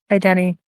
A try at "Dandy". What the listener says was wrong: And it's not Danny, it's Dandy. It's Dandy. Dandy Random. Dandy.